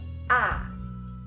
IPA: æ